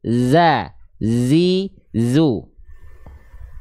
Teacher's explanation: Nah itu harus terdengar ya, itu harus terdengar oleh teman-teman sekalian. Za, zi, jangan sampai bocor desisannya jadi kayak huruf S. Jangan sa, jangan jadi sa, harus za, zi, zu. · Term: sofir